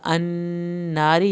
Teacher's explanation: را کو پتلا پڑھنا ہے کیونکہ را کے نیچے زیر ہے